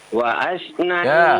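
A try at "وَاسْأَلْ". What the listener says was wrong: Was bukan waas ya. Was tidak ada di situ harakat fathahnya ya.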